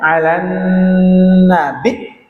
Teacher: alan nabi ditekan, enggak ada nafasnya. Bukan los. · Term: hamzah